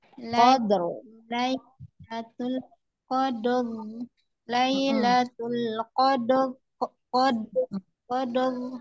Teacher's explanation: di kol-kolah dulu coba qad, baru dialirkan ro.